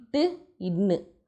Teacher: நாவினுடைய நுனி அன்னத்தினுடைய நுனியை தொடுறது